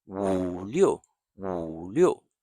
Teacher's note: I said the third tone is low and steady. The fourth tone is high and falling.